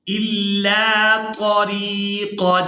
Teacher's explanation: طا کا جو مخرج ہے وہ زبان کی نوک اور جو اوپر والے دانت ہیں اس کی جڑ میں جب ہم زبان کو لگائیں گے تو وہاں سے طا ادا ہوگی